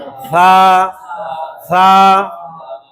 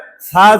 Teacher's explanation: জিব্বার আগা সামনে উপরের দাঁতের আগা থেকে নরম ভাবে যেন আদায় হয়, তাহলে এটা মাখরাজ উচ্চারণ আসবে।